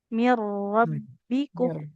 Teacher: ditekan pada huruf rnya Ya, kayak kita baca ro bertasydid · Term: idgam